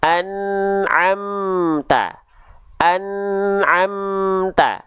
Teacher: enggak boleh ada bunyi vokal e di ujung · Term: mim sukun